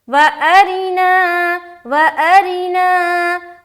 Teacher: آگے وَأَرِنَا، واو زبر وا، حمزہ زبر آ، وَأَ، را زیر ری، وَأَری، نون الف زبر نا، وَأَرِنَا، یہاں پر را کو باریک رکھنی ہے، را کا نیچے زیر ہے